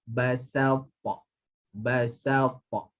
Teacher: ba nipis, sin nipis, baris atas dua-dua